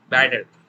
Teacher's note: If you listen to any American speaker, they would say better. T would become D, right?